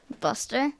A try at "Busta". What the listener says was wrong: E-R. It's B-U-S-T-A-A-A-A-A.